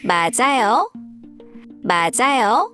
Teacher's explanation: when a syllable ends with a final consonant, called Batchim, and the next syllable starts with a vowel, the final consonant moves over and is pronounced with the next syllable. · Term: linking sounds